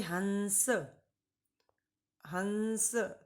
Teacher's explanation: अब हमें हंस बोलना है तो जब तक नासिका का सहारा नहीं लेंगे तब तक हम हंस नहीं बोल पाएंगे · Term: अनुस्वार